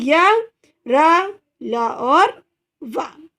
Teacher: अंतस्थ व्यंजन कौन से होते हैं, इन व्यंजनों को उच्चारण स्वर एवं व्यंजन के बीच होने के कारण इसे क्या कहेंगे, अंतस्थ व्यंजन। और इनका उच्चारण करते समय जीभ मुंह के किसी भी भाग को पूरी तरह स्पर्श नहीं करेगी।